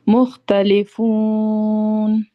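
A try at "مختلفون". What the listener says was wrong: बहुत अच्छे, अल्हम्दुलिल्लाह।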